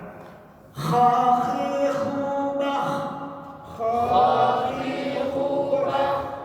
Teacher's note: Kemudian nun mati tanwin bertemu dengan kha. Coba kita baca makhrajnya huruf kha di atas tenggorokan